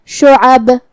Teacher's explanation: قلقلہ کا معنی ہے حرف ساکن کو ہلانا، تو ہم حرف البا کو ہلاتے ہوئے یہ کلمہ کو ادا کریں گے، جو کہ قلقلہ آیت کے آخری میں آیا، لہذا یہاں قلقلہ کبرا ہوگا.